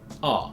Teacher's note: Instead of o, in thought, we have ah. This is a low back vowel, ah.